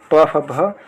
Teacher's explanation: जैसे आप बोलेंगे प, फ, भ तो ये इसमें ओठ का इस्तेमाल ज़्यादा हो रहा था, इसलिए ओष्ठ व्यंजन करते हैं।